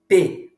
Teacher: um lábio o lábio superior precisa encostar no inferior para que a pronúncia do fonema P ocorra